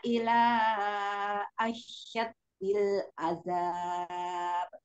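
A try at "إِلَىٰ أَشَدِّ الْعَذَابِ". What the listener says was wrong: Dan yang ada tasdidnya Umi ila asyad Jinnya jangan ada tasdidnya, dalnya ada tasdidnya. Ulang lagi.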